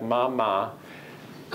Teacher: you are changing your articulators when you go from an ah to an m. Your lips close. The nature of the acoustical signal changes.